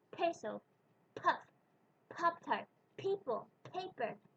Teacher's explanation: In English, when we pronounce P at the beginning of a word or a syllable, we let out a puff of air. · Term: aspiration